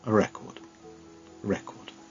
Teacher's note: it's got just 2 syllables, and the stress is on the 1st syllable